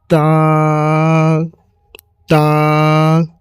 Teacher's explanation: এই তা অক্ষরটি একটু চাপ দিয়ে বের হবে, মুখটিকে চাপ দিয়ে, তা, জিহ্বাটা তালুতে লাগিবে। আর এই তা অক্ষরটিকেও একালি পরিমাণ টান দিতে হবে।